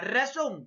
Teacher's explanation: La mayor fuerza de voz, última sílaba. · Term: palabra aguda